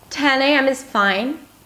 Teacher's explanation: Again, that rising, rising intonation.